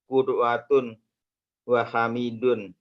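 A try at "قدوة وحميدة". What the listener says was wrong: Hamidatun. hamidatun. Nggak ada wawunya. Qudwatun hamidatun.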